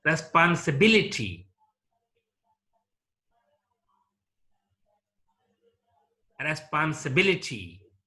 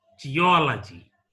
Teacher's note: stress is laid on the ante penultimate syllable it means the third from the last syllable